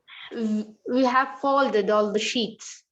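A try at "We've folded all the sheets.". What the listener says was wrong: So don't bring the sound of that have there because H is not there. H and have are missing there in that contraction. So we have to pronounce the word as we have fold.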